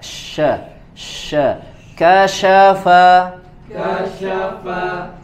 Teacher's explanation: salafa salafa kasyafa kasyafa syin ya punya sifat tafasyi menyebar ya menyebar angin atau udaranya di dalam mulut diarahkan ke depan